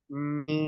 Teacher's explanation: अब ये मीम का तरीका है कि मीम को अदा करते वक्त दोनों होंठों को प्रेस करेंगे अंदर की तरफ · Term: बर्री